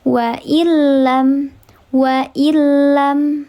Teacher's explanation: nun sukun bertemu dengan huruf lam. Dibacanya dileburkan saja tidak dibaca panjang. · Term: ilgum ghunah